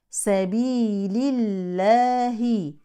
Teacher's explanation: ترقق لام اسم الجلاله لانها سبقت بكسر